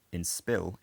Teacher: in spill it's unaspirated because there's also a s in the syllable onset